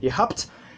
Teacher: le B subit encore un dévoisement et se prononce comme un P